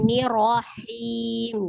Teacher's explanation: Maksudnya getarnya itu jangan digetarkan lebih dari sekali. Ro-nya kalau nir tipis, ro-nya baru tebal. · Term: ro-nya tasdid